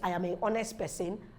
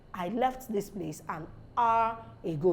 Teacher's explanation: the H is not pronounced